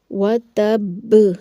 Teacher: با کو سختی و جماؤ کے ساتھ بھی پڑھیں گے کیونکہ با جو ہے مشدد ہے، مشدد حرف کو جماؤ اور سختی کے ساتھ پڑھا جاتا ہے۔ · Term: قلقلہ اکبر